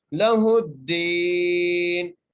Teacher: نون کو وقف کی صورت میں ہم ساکن کر دیں گے